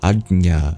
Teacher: A J next to a palatal nasal sound.